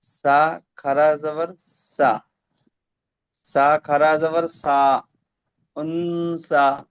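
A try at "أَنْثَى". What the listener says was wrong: টান হবে না। উনসা। একটু টান দেন না, বেশি বেশি টান দেন না।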